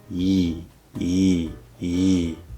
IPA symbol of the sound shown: j